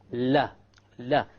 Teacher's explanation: the letter lam or la originates from the front edge and not the tip